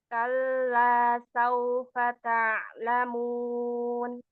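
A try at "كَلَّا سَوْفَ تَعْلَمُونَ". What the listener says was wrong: Saufanya tipiskan lagi. Kalla, saufa ya.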